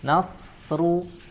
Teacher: Nah, di sini perlu kita perhatikan bersama, ya, huruf nun kita baca dengan sifat tipis, ya, sifat tipis suaranya, na, kemudian setelahnya ada huruf shad, ya, ada huruf shad sukun, kita baca dengan sifat tebal, ya, dengan sifat tebal, ya, dan isti'la dan itbaq